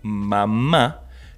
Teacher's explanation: cuando decimos mamá, nuestro sonido debe salir por nariz para poder seguir emitiendo el sonido de la M.